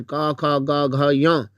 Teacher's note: जीवा का पिछला भाग तालु से, कोमल तालु से स्पर्श हो जाता है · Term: कंठ व्यंजन